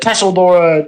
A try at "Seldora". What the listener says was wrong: It's not pronounced Tesseldora, it's Seldora, but you're welcome to.